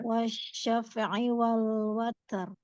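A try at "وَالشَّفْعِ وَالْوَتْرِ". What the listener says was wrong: Huruf fa-nya jangan sampai wasyaf, tidak dipantulkan karena fa. Jadi hanya dialirkan udara dan suaranya. Wasyaf'i wal watar.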